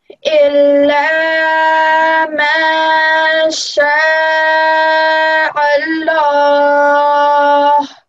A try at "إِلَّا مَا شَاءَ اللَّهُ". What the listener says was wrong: Did you pronounce this like an ain, this hamza? Did you pronounce it like a ayin sound? Because I know it looks a bit bigger than a normal hamza, but it's actually supposed to be a hamza. This is an ayin. This is an ayin, and this is a hamza.